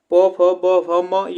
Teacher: इसका उच्चारण स्थान हमारा ओष्ठ होता है